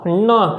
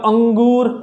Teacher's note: हवा जो है नाक से निकलती है। आप जैसे बोलेंगे न, और अंग जैसे अंगूर बोलते हैं आप, अंगूर, हवा जो है आपकी कहाँ से आती है, नाक से आती है, ठीक है। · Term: नासिकीय